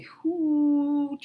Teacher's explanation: when you say hoot, you can see your lip is actually puckering up together into a rounded position. So this is what we mean by rounding. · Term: rounded vowel